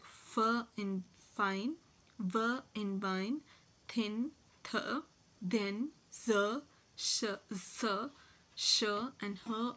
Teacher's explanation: the nasal passage of air is closed and air escapes to a narrow Gap in the oral passage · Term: fricatives